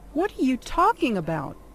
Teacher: the word stress are on talking